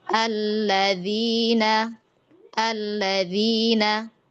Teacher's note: Ya kalau alladzina karena jamak maka dia nabernya adalah di huruf dal.